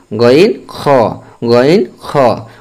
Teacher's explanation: তিন নাম্বার মাখরাজ হালকের শেষ হইতে গইন খ